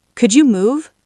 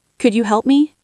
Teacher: Imagine if I said, "Could you move?" with a flat, hard voice. It sounds like an order, not a question.